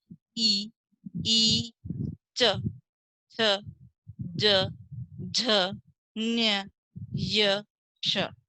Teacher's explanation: इसी तरह ई, च, छ, ज, झ, ञ, य, श। ये तालु, जब हमारी जीभ तालु से टकराती है तब ये वर्ण बोले जाते हैं